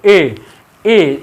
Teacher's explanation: कंठ और तालु दोनों से निकलता है एदैतुह, कंठ और तालु। ए बोलोगे ना तो कंठ से भी निकलता है और तालु से। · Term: कंठ तालु